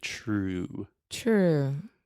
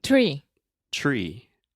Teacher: so true that is like a CH sound honestly in English we should write true with a CH it